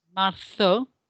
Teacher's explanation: the Z sound, if we're in Spain, is going to be a th sound. So it's marzo.